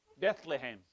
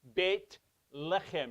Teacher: It is Bet, it is pronounced Bet. There's no th. There's no th, it's T. There is no TH in Hebrew.